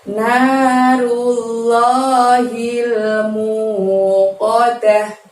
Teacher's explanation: ujung-ujung ayatnya berakhiran bunyi huruf H karena di situ ada tak marbutoh atau tak bulat dan dibaca waqaf